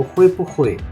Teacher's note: पू के ऊपर वैसे 4 टोन होती है, लेकिन क्योंकि दो वर्ब आ गए हैं लिहाजा हमने इस पू को न्यूट्रल रखा